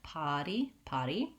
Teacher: i want just an open ah vowel to go right back to my d at the end